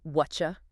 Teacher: >> So what are you compresses into whatcha? >> It goes from four distinct beats down to two blurry ones.